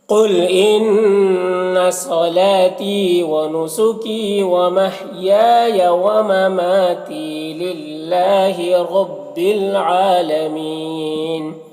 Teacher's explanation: عالمین میں عین میں کھڑا زبر ہے، ایک الف کے برابر کھینچیں گے اور یہاں پر وقف کی صورت میں نون کا زبر سکون سے بدل جائے گا، تو مد عارض وقفی ہوگا